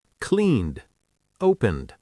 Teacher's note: It's a D sound, not a full ED.